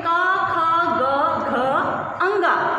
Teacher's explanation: इन वर्णों को उच्चारण करते समय कंठ का स्पर्श होता है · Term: का वर्ग